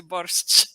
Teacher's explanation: a pronúncia literária desse som era sh seguido por t, né? Sh, como se fosse borscht, né?